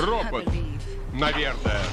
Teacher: обладал узнаваемой манерой, гнусавым голосом